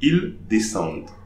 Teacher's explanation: I'm not pronouncing the mute E, I'll pronounce the D before.